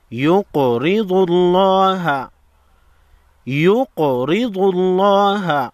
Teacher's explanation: قاف ساکن کو ہلا کر پڑھیں گے